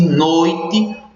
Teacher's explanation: na pronúncia de noite, o O tem uma pronúncia muito mais forte do que o I. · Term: semivogal I